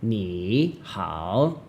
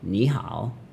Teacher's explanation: The first one becomes a question tone. It's basically just because it's easier to say, so then you don't have to go nǐ hǎo, you just go nǐhǎo.